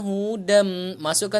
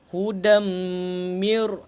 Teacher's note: Masukkan terus kepada mim. Tanwin tidak selari bertemu mim. Yang ni hukum dia idgham bi gunnah.